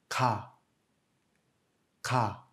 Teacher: On notera aussi que plus d'air est expulsé qu'avec notre G et K. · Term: kiok